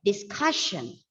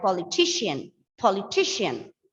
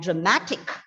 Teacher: Penultimate. The stress should be given on the penultimate syllable. That is, the second last syllable has to be stressed.